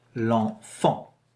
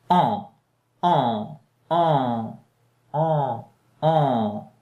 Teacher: A bit of air has to come out of your nose. That's why we learn, we say it's a nasal sound. Yeah, a bit of air has to come through your nose when you say it out loud.